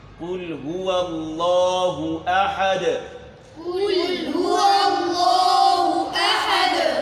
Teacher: جیسے مثال کے طور پر اب ہم قلقلہ والا حروف لے لیں، قل هو اللہ احد، قل هو اللہ احد، یہاں دال ساکن ہے، احد دال ساکن ہے اور یہ حروف قلقلہ میں شامل ہے، یہاں ہم نے اس کو حرکت دینی ہے